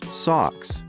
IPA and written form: sɑks (Socks)